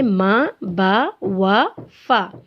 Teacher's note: होंठों से ये 4 हरूफ अदा होते हैं